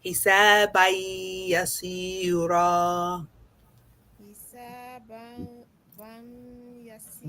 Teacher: حسابا يسيرا. No, we shouldn't hear any noon at all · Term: merging